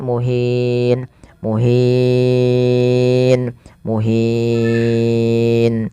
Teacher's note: Setelahnya bertemu dengan huruf sukun arid, maka dinamakan dengan mad arid li sukun. Boleh memanjangkan 2 harokat, boleh 4 dan boleh pula 6 harokat.